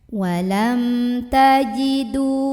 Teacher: karena ada mim sukun yang bertemu dengan huruf Ta Maka mim sukun nya ini kita bunyikan dengan jelas bunyi am dan tidak perlu ditahan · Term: izhar syafawi, idhar syafawi